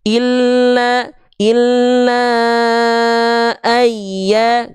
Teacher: Mad jaiz panjangkan la-nya 5 harokat. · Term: mad jaiz munfasil